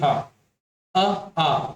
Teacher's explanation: ह का उच्चारण स्थान क्या है, तो कंठ है।